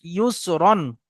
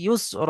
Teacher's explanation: তো সেই হিসাবে এখানে আলিফ আসুক আর না আসুক, দু জাবর থাকলে এক জাবর গণ্য করে একালি পরিমাণ টান দিয়ে পড়তে হবে যখন অক্ফ করার সময়। দু জাবর আসলে এক জাবর গণ্য করে একালিফ পরিমাণ টান সহ পড়তে হবে।